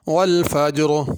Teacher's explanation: اگر یہاں پہ آدمی رکے، آگے ملا کر نہ پڑھے تو را کو پر کریں گے، اور اگر ملا کے پڑھیں تو پھر را کو باریک پڑھنا ہے۔